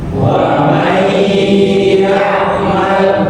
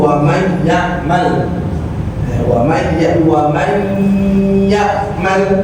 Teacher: Huruf idgham bil gunnah, maka nun mati atau tanwin dimasukkan ke huruf berikutnya dengan dengung